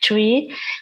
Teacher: you also have this e this is long and closed e vowel sound